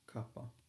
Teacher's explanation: It's not kappa, it's kappa. It's quite a soft K. It's almost getting closer to a G.